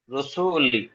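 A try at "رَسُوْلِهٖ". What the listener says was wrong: রুসুলি, লাম টান হচ্ছে একটু। রুসুলি হবে না, রুসুলি হি।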